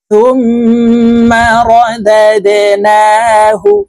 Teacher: এখানে দাল কলকলার হরফ নিচের দিকে ধাবিত করে ধাক্কা দিয়ে উচ্চারণ করতে হবে।